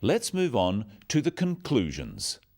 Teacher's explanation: Stressing conclusions because it's the key word in this sentence.